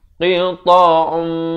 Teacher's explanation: masuk beserta dengung idgham bi gunnah dua harakat